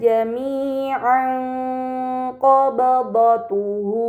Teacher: terdapat harakat fathain yang bertemu dengan huruf qof ini dinamakan ikhfa Hakiki maka fathahain harus dibaca samar dengan gunah yang dipanjangkan